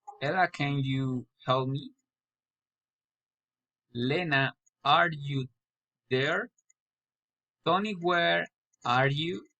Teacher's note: Direct address, rising intonation.